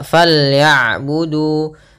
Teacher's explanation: Apabila dhammah bertemu dengan waw, maka kita hukumi dengan bacaan mad tabi'i. Panjangnya untuk huruf du adalah 2 harokat. Maka fal ya'budu baru dilepaskan.